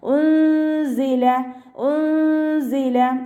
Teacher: നൂൻ സാക്കിനയ്ക്ക് ശേഷം ഇഖ്ഫാൻ്റെ ലെറ്ററായിട്ടുള്ള സായാണ് വന്നിട്ടുള്ളത്. നൂൻ സാക്കിനയുടെ സൗണ്ടിനെ മറച്ചു വെച്ചിട്ട് മണിച്ചോതി കൊടുക്കുക കേട്ടോ.